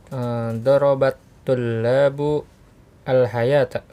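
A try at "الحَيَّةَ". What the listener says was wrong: Jadi di iya-nya ada apa? Tasdid dan iya-nya pendek, bukan al-hayata, bukan. Al-hayata. Darabat tullabul hayyata ya.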